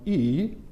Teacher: The first vowel is spoken with a dipping tone, E, where the pitch falls and then rises.